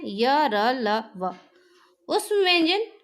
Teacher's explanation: अंतस्थ व्यंजन के उच्चारण में जिह्वा जो है मुख के विभिन्न भागों को पूर्ण रूप से स्पर्श नहीं करती।